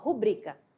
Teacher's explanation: A sílaba tônica é o bri, rubrica.